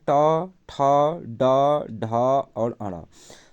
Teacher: ट वर्ग का उच्चारण स्थान मूर्धा से होता है।